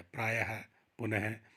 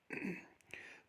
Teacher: इस ध्वनि चिन्ह का उच्चारण ह के समान होता है, स्वर रहित ह होता है। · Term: विसर्गे